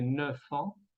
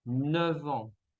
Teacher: La F se cambia en V. En lugar de decir 9 ans, vamos a decir 9 ans.